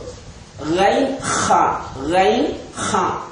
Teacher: இந்த இரண்டு எழுத்துக்களும் தொண்டையின் மேற்பாகத்தினால் வெளியாகக்கூடிய எழுத்துக்கள்